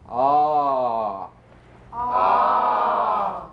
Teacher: the largest stretch opening is called number five ah as in father or com commonly mispronounced as my father was calm my father